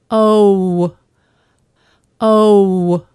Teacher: first say O, then close the lips in the shape of a W. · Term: vowel sound O